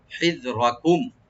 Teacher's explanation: মিম সাকিন এখানে আমরা এজাহার করবো, স্পষ্ট করে পড়বো, এখানে গুণ হবে না